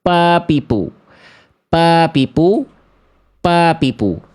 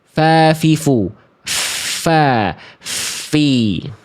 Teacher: Enggak akan terhadirkan aliran nafas di situ karena jalurnya mampet tertutup tertutup. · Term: huruf P